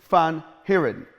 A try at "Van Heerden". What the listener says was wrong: Van Heerden. So roll the R. Van Heerden.